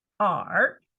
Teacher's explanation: R is third tone. You go down first and then you go up. So falling tone first and then rising tone.